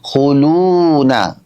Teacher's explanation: হু যখন বলছি তখন কিন্তু আমার ঠোঁট গোল হচ্ছে, লু বলছি তখন এক আলিফ টান হচ্ছে না